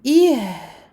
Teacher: Et on donne ha sa rakhawa. Écoulement du son.